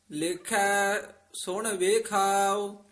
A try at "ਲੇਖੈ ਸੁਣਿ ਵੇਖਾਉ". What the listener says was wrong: ਇਕਠਾ ਨੀ ਬੋਲ ਦੇਣਾ ਵੱਖਰਾ ਪਦ ਉਚਾਰਨ ਕਰਨਾ